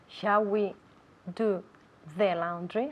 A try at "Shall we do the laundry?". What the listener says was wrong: I want to see more of your tongue.